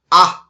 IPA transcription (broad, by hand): ʌ